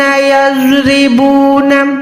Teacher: यज़रिबून में ज़ौद मोटा है, रा बारीक है, क्योंकि रॉ के नीचे ज़ेर है। सिर्फ जबर और पेश पे रॉ मोटी अदा होगी, ज़ेर पे बारीक अदा होगी।